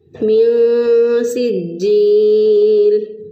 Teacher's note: جیم کو مضبوطی رقبت سے پڑھا کیونکہ اس کے اوپر شد ہے، تو شد والے حرف کو ہم مضبوطی رقبت سے پڑھتے ہیں، میاں سجیل۔